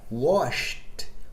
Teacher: E na palavra washed, o ED é pronunciado com som de T.